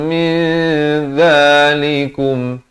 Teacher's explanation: mi samarkan, bukan min. Kalau min jadi izhar, di sini ikhfa. Mi dua harakat barulah zalikum.